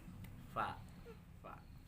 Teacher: hurufnya ini harus bertemu antar gigi atas bertemu dengan bibir bagian bawah ya digigit